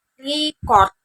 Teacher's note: Tekanan pada suku kata kedua sebagai kata kerja yang berarti merekam